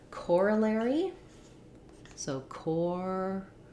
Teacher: in corollary, we have first syllable stress